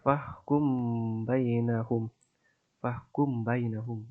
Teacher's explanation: M-nya itu dibaca samar-samar, yaitu fahkum, fahkum. Jadi agak didengungkan ya. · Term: ikhfa syafawi